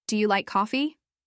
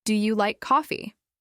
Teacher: Hear the rise at the end? That's the natural melody that English speakers use all the time. It makes your question friendly, engaging, and easy to understand.